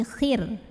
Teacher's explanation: Huruf ro-nya jika berhenti disukunkan dan dibaca secara tarqiq. Kenapa? Karena sebelum ro yang disukunkan barisnya kasrah yaitu huruf kha. Maka ro-nya ini tipis.